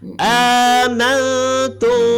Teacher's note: Mim mati. Jadi sembunyinya dengan cara tidak merapatkan bibir. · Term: ifa syafawi